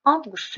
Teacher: avqust sözündə bir dənə vurğu əvvələ düşür